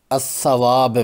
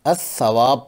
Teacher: वसल की सूरत में लगाई जाती है जैसे अ सवाब में चूंकि लाम पर कोई हरकत नहीं इसलिए यह साइलेंट है खामोश है पढ़ने में यह हजब होगा